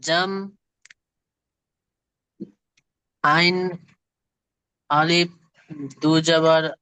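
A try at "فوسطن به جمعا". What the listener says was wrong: দুজাবার হবে না, আয়াতের শেষে দুজাবার এলে এক জবরকে বাদ দিতে হবে। আইন আলিফ জাবার আ। ফাওয়াসাতনা বিহি। জি, ফাওয়াসাতনা। তাহলে আমরা এই আয়াতটা জানলাম, ফাওয়াসাতনা বিহি জামআ।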